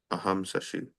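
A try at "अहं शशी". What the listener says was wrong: Awesome. Good job.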